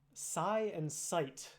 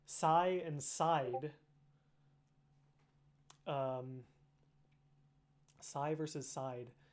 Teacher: the vowel is produced the same between not having a following consonant versus having a voiced consonant after